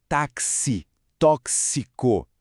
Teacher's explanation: o x vale pelo som do k e do s juntos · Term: dífono